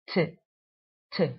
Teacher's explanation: top of that after the lips you have the alveolar Ridge the alveolar Ridge is that point where you pronounce the sound tip tip so when your tongue goes against that point you know